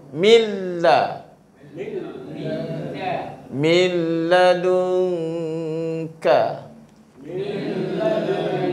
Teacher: nun mati ni dia dimasukkan ke dalam huruf lam.